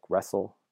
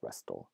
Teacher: in a word like wrestle the T is not usually pronounced but historically it would have been pronounced as something like rest'll